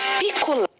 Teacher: Então é muito mais fácil quando a palavra tem acento. A sílaba que tem acento é a sílaba mais forte. A sílaba tônica é o lé.